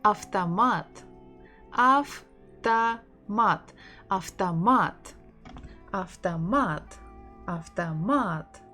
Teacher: O is not stressed, that's why we say it as A.